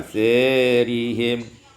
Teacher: imalatu fathati sa wal alif, imalah fathah sa dan alif maka menjadi asirihim.